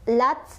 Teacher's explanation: tak sukun itu punya sifat hamas juga, jadi ada udara keluar